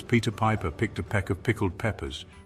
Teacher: bombards us with plosive P sounds and the tricky combination of sic and ed.